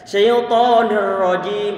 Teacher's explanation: Dia terlalu kebablasan dalam menghirangi takrir ataupun getaran di ujung lidah. Kita perlu untuk nyedikitkan, untuk meminimalisir, tetapi jangan sampai dihilangkan karena karakter huruf ra memang takrir, nggak bisa dihilangkan dan jangan diperbanyak.